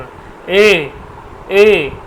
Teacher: এ উচ্চারণ স্থান হচ্ছে কন্ঠ এবং তালু